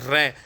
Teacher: ठीक है, तो इसलिए इसको लुंठित बोल दिया। लेकिन जीवा जो है इसमें कंपन हो रहा है रै, ठीक है, तो इसको प्रकंपित भी बोल दिया। तो मतलब लुंठित भी है प्रकंपित भी है।